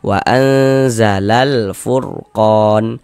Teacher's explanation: alif lam qamariah itu disebut juga dengan izhar qamariah. Karena huruf lamnya itu dibaca jelas · Maka alif lam bertemu dengan huruf fa, dikarenakan huruf fa huruf qamariyah, maka hukumnya alif lam qamariyah. Alif lam qamariyah itu disebut juga dengan izhar qamariyah, karena huruf lamnya itu dibaca jelas. Ada tanda bacanya, ini ada tanda sukunnya.